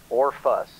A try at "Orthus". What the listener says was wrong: No, or th, as in thong, thus.